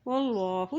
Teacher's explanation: अल्लाह का नाम मोटा अदा किया जाएगा क्योंकि अल्लाह के नाम से पहले ज़बर है